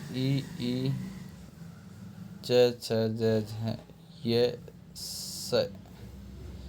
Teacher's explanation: इ ई च छ ज झ य स तालु स्थान से उच्चारित होते हैं